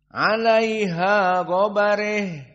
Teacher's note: Rya mufakhamah karena dalam keadaan fathah dan ba sebelumnya fathah